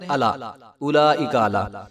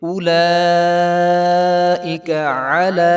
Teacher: اس کو الا نہیں پڑھیں گے بلکہ عین کی آواز آنی چاہیے